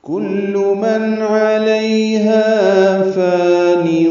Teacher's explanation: کلو میں کاف لام دونوں باریک پڑھے جائیں گے اور معروف طریقے سے پڑھیں گے. من میں نون ساکن کے بعد عین آنے کی وجہ سے اظہار ہے، نون کی آواز ظاہر کر کے پڑھیں گے. علیہا میں عین وسط حلق سے ادا ہوگا، لئی یا لین ہے، یہ نرمی سے پڑھیں گے.